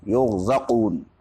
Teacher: ہاں البتہ یہ ہے یرزقون میں را کے اندر تفخیم ہے، را چونکہ عارضی طور پر مفخم ہوتی ہے تو را سے پہلے چونکہ پیش ہے اس وجہ سے اس کی تفخیم ہوگی